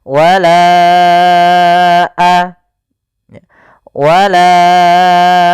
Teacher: bukan pada lafal lanya maka kita namakan dengan Mad Jaiz munfasil maka kita panjangkan huruf laanya sepanjang empat harakat atau lima harakat · Panjangkan la-nya dulu 4 harokat baru lepas.